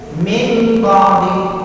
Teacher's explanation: Ada contoh lain yang bagi nun ketemu ba, nunnya yang dibaca nun mati secara jelas, tapi dia menjadi mim suaranya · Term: iqlab